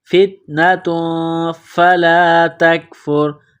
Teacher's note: تا، تنوین ہے تا کے اوپر دو پیش، فتنۃ فلا تکفر، تنوین کے بعد فا ہے، حروف اخفا ہے غنہ کریں گے، آواز ناک میں چھپائیں گے ، فتنۃ فلا تکفر، تا کو کاف کے ساتھ ملانا ہے،